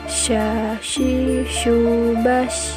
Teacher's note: Berikutnya huruf Sya. Huruf Sya keluar dengan menyentuhkan tengah lidah dengan langit-langit.